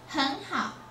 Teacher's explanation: we usually change the first word from third tone to second tone